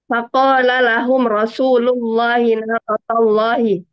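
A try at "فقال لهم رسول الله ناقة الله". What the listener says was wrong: Nah, sahih. Itu udah bisa tuh.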